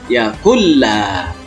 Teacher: atau mentasydidkan bila artinya dengan tidak atau tanpa guna mendukung jadi Bacaan yang dibaca dengan cara dimasukkan tetapi dengan cara tidak mendengung